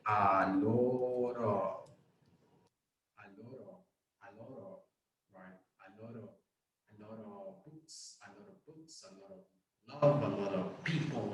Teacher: the pronunciation of the word, it sounds like if it's just one word